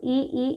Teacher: इ ई इन सब का उच्चारण स्थान तालु है